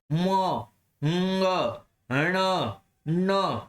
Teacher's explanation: म, ng, ण, न, सब में नाक काम आ रहा है, तो नासिका भी है।